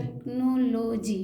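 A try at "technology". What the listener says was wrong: हाँ चलिए, टेक्नोलॉजी क्यों, CH से तो च होता है, CH से च होता है। तो आपने टेक कैसे पढ़ा, च कहाँ, च नहीं। होना चाहिए, CH से च होता है ना।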